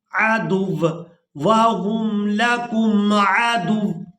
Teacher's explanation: عن امر ربه افتتخذونه وذريته أولياء من دوني وهم لكم عدو، اب یہاں پر بھی اکثر لوگ وقف کرتے ہوئے غلطی کر جاتے ہیں، تو یہاں پر ہم نے وقف کرتے ہوئے واو کے اوپر جو دو پیش ہیں ان کو ادا نہیں کرنا، دال کو واو مشدد کے ساتھ سختی کے ساتھ ملائیں گے